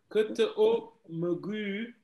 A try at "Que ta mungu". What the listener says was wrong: Non, tu as dit o. C'est A. Que ta mungu fa. Que ta mungu.